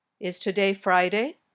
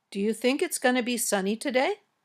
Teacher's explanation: questions the ones that can be answered with yes or no these questions usually have Rising intonation your voice goes up at the end